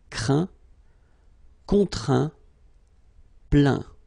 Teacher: Okay, and as usual, final T here is not pronounced, so you get craint, contraint, plaint.